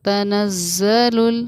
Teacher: زا کی ادائیگی وائبریشن کے ساتھ